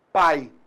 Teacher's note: Pai, apenas uma vogal. E o I, semivogal.